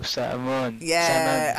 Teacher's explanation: So salmon, silent L.